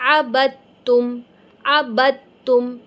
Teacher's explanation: میری با اور تا میں آواز مل رہی ہے، عبدتم، عبد نہیں کہہ رہی، عبدتم۔